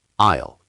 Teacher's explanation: I'll is one syllable. I'll, like I plus a light L.